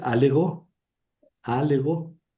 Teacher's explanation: Suprimo esta primera alfa para evitar el choque de dos vocales largas. Eso se llama yato externo.